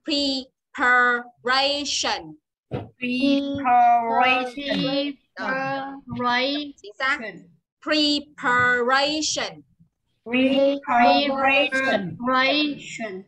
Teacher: Mà ray nhận trọng âm, nhớ chưa? Đọc nhớ trọng âm nó thả vào đấy một tí.